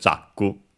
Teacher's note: it would be accented on the first syllable as expected